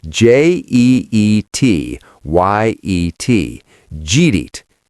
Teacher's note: just, did you eat yet, smashed together by a hurried American